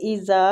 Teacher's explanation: وَإِذَا وہ پہ ہونٹوں کو گول کریں گے، اِذَا زال کو کھینچیں گے نرمی کے ساتھ، الف مد ہو رہی ہے